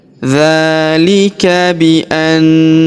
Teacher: Huruf na kita tahan dan kita tekan serta kita dengungkan dua sampai 3 harakat. Karena di atas huruf na terdapat tanda tasdid yang ini ya.